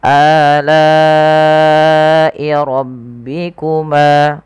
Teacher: rohnya tebalkan karena dia roh tafkhim, adanya huruf roh yang berharakat fathah